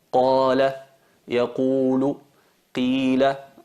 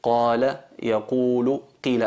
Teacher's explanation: Qala, yaqulu, qila. Alargamos, no es una vocal corta, sino es una vocal larga, y cuando se trata de una vocal larga alargamos durante 2 tiempos la letra en sí. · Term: med tabi'i